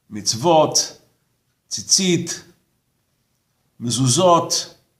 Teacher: In the Sephardic pronunciation, whether the Tav has a dot or doesn't makes no difference to the pronunciation. It's pronounced as a T.